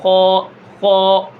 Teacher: اوپر کی طرف تالوں کی طرف زبان کو اٹھائیں گے تو یہ خا موٹا ادا ہوگا